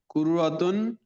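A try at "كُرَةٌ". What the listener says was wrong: কুররাতুন না, কুরাতুন, কুরাতুন, কুররাতু হয়ে যাচ্ছে আপনার, রয়ে তাসদিদ হয়ে যায়, রয়ে তাসদিদ নাই, কুরাতুন রয়ে জবর।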